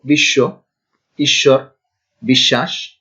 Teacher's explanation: এখানে তালবর্ষের সঙ্গে বফলা উচ্চারিত হবে না, কিন্তু উচ্চারিত না হলেও তালবর্ষটা দ্বিত্ব হবে, দুইবার উচ্চারণ হবে।